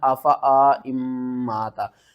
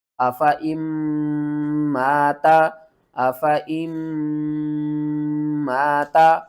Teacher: درمیان میں جو نون ہے نا اس کو آپ نے چھوڑ دینا ہے، اور اس حمزہ کو میم کے ساتھ ملانا ہے۔ میم مشدد ہے تو اس کے اوپر غنہ بھی کریں گے۔